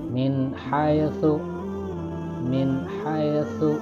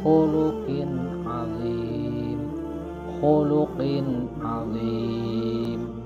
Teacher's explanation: bacaannya tidak berdengung, tapi harus jelas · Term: idhar